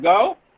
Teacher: the glide begins at central unrounded position between half closed and half open and moves in the direction of the wobble ooh which is